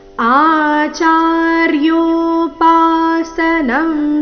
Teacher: ಆಚಾರ್ಯೋಪಾಸನಂ ಶಬ್ದದಲ್ಲಿ ಮೊದಲನೇ ನಾಲ್ಕು ಅಕ್ಷರ ದೀರ್ಘ